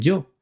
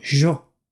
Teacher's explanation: que ya te expliqué tiempo atrás Me refiero al yeismo rehilado la mayoría de los argentinos y de los uruguayos no dicen yo sino yo como si fuera una s una h y una o